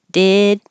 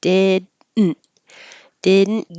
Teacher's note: I'm not going to say the middle D or the T.